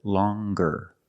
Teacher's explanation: longer with a nasal sound plus the hard G